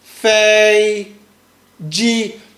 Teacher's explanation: Long and loud and flat. · Make sure that that's what we call flat tone. It's very flat.